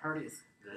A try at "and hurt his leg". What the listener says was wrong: Yes, and hurt his leg. But we still want to keep and short, long, and hurt his leg. And hurt his leg.